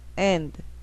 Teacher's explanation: and 끝에 있는 드는 거의 소리가 안 나죠. 앞에 나온 a만 크게 소리 나죠